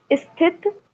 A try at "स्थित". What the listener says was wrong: अरे फिर ई आ गया। स। स। सी। स्थि। स्थित। बाकी सब ठीक है, ये ई फिर आ गया।